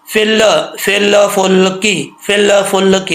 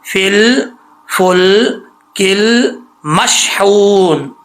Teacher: غلطی کیا ہوتی ہے، لوگ پڑھتے ہیں فل فل فلکی، فل فلکی، یہ جو لا کی آواز آتی ہے نا، یہ غلط ہے۔ آواز جو ہے لام کے مخرج میں جا کر جم جائے، زبان واپس نہ لوٹے، ٹھیک ہے، واپس لوٹے گی فوراً تو سمجھے قلقلہ ہو گیا، اگر وہیں پہ لام کے مخرج میں زبان جم جائے گی تو قلقلہ نہیں ہوگا، جیسے فل فل کل مشحون، ٹھیک ہے، 3 لام ہے یہاں پہ، فل فل کل مشحون۔